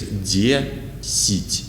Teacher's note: Letter E is stressed, so we say D, but unstressed letter Я in the middle of the word is pronounced like E, like unstressed E